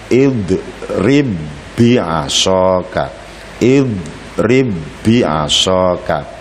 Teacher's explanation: cara membacanya adalah dengan memasukkan huruf pertama yang mati pada huruf yang kedua yang hidup atau dengan mentasydidkan hurufnya dalam arti dibaca seperti bertasydid Hai untuk lebih jelasnya kita tampilkan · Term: idgham mislain